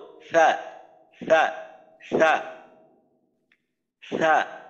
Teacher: আমরা জানি সা হামসের হরফ, বাতাস চালু থাকবে,